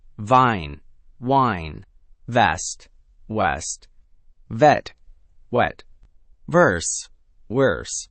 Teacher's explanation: The teeth-on-lip contact for V and the round, closed lips for W. These are two completely different mouth shapes, and mixing them up is one of the fastest ways for your speech to sound unclear, even if grammatically your sentence is perfect. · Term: the V and W distinction